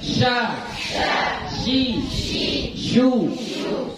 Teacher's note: Bibir nggak ikut ke depan ya. Jangan sya. Ya. Bibir tetap normal. · kalau shu karena dia dhammah baru bibirnya ikut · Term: shin